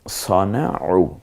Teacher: এরপরে সানাউ না পড়ে আমরা সনাউ পড়ব, সনাউ, আইনটা গলায় চাপ দিয়ে